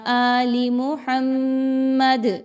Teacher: وقف کیا تو دال کو ہلا رہے ہیں کیونکہ دال حروف قلقلہ میں سے ہے